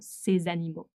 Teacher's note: since animaux begins with a vowel, we can do the liaison between the ces and animaux